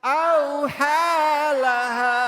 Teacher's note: Ingat jangan o tapi au. Tinggal ditambahin gelap.